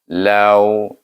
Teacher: Iaitu kita baca dengan lin, lau, jangan panjangkan dia, lau, kerana dia huruf lin